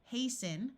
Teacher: the root is haste and we add the n and the T sound disappears